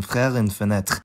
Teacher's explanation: The voiced uvular fricative [ʁ]. That sound has an allophone as well; it gets devoiced when following a voiceless plosive or fricative, like in frère and fenêtre